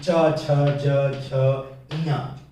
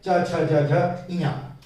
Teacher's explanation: यानी इनको बोलने में प्राणवायु जो एक घर्षण के साथ, एक रगड़ के साथ बाहर निकलती है, इसीलिए इनको स्पर्श संघर्षी व्यंजन कहते हैं।